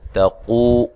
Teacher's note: قو واو مدہ ہے، تا کو باریک پڑھنا ہے، قاف کو موٹا ادا کرنا ہے